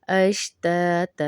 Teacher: यहाँ पर हम वक्फ करेंगे, अश्तातल नहीं पढ़ेंगे, वक्फ करेंगे.